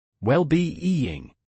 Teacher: It is well-being, with stress on both parts.